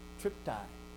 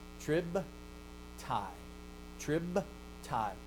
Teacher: Unvoiced, it makes the labial become an unvoiced. It's still a labial, but it's an unvoiced labial because the letter after it is unvoiced. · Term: regressive assimilation